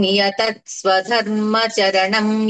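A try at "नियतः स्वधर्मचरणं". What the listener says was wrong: పెదాలు కలిపేస్తున్నారు మీరు. పెదాలు కలపకూడదు.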